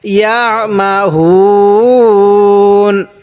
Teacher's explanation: যদি আমরা এখন ওয়াকফ করি তাহলে আমরা এখানে 3 আলিফ টান দিব